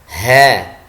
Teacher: Jadi ha ketika kita lafalkan ucapkan mengeluarkan nafas atau nafas lepas. Ha ya. Suaranya lambat ya. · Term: hams